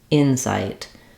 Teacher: So in incite, the noun, we have first syllable stress. The in is longer and the sight is shorter.